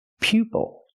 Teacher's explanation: Use the long U sound like you, pupil.